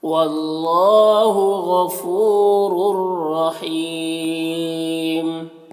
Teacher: رور، یہاں پر دونوں را کو پر پڑھیں گے، اور یہاں پر تنوین کے بعد را حروف یربلون میں سے، تو تنوین کو را سے ملا کر بغیر غنہ کے پڑھیں گے، اس کو ادغام تام کہتے ہیں